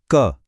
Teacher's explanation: बोलिए क। फिल किया, जीभ ने ऊपर तालू को पूरी तरह टच किया ना, बस यही स्पृष्टा है।